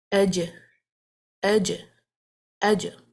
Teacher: Now, when you separate the tongue from the makhraj, which is the palate, when you separate the middle of the tongue from the palate, for the jim, you will be bouncing it. Means you have to apply the qalqala now. · the makhraj, touching the hard palate with the middle of the tongue. As these arrows are indicating, these arrows are showing actually the traveling of the sound up towards the makhraj, and it's not finding its way out now because the makhraj is closed.